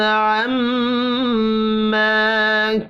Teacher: میم مشدد پر غنہ کرنا ہے، یہ بھی الف مدہ ہے۔